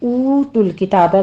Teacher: او کو واو مدہ ہے، ہونٹوں کو گول کر کے 2 کاؤنٹ کر لیجئے